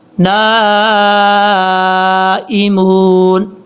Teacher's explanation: نون کے آگے جو الف ہے، الف کے اوپر مد ہے، اس مد کو مد متصل کہا جاتا ہے. اڑائی الف کے برابر آپ نے لمبا کرنا ہے